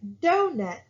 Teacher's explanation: i'm saying more stress on the dough and less on the net · it's a stressed syllable which is do followed by an unstressed syllable so they're going to pay more attention to that doe part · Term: stress syllables